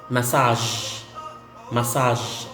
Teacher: So you don't say massage because the sound is not g, but j. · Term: je